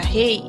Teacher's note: A palavra rei é um exemplo de ditongo decrescente. A vogal E vem antes da semivogal I.